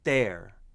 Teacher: it sounds like a d consonant there because my tongue is blocking the airflow